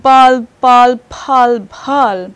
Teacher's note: So we have not just a voiced and voiceless aspirated, we have the voiceless unaspirated, the voiceless aspirated, as well as voiced aspirate